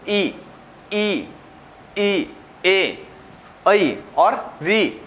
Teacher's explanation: तो इनका जो उच्चारण हो रहा है वो हो रहा है हमारी जीभ के आगे वाले भाग से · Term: अगर स्वर